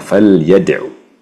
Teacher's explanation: jangan memanjangkan Ain di akhir kata falyadu